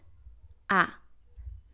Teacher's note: It's an a but nasal open sound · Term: nasal sound